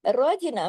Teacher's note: फिर देखिए फअख़रजना, अख, फा को जमाओ के साथ, लेकिन फा को हैवी, सात मोटे हरूफ क़ुस्सा तिब्तन किसकी फैमिली से है, रा जो है जबर के साथ है, रा हैवी पढ़ा जाएगा। रजना में रा तो हैवी पढ़ा, लेकिन जीम बारीक, लेकिन जीम पे कलकला भी होगा। रजीना, देखें खा को तो जमाओं के साथ पढ़ा, उसको नहीं हिलाया, लेकिन जीम को हिला दिया, कलकला कर दिया।